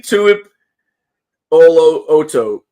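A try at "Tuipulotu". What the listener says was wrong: Nah, you put a bunch of extra vowels in there. It's true, but it's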